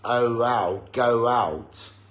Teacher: while I'm going from one sound to the next, the actual w sound will just happen because of articulation. It's the way my mouth is moving and the way I'm creating those two sounds.